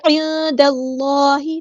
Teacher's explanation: عند اللہ، عین کو مستحلق یعنی مڈل تھروٹ سے ادا کرنا ہے، اور نون ساکن کے بس کو یہاں ہم چھپا دیں گے۔ عند اللہ، دال ہمارا باریک لائٹ لیٹر ہے، اللہ کا لام یہاں پہ پورا ادا کریں گے، ہیوی ادا کریں گے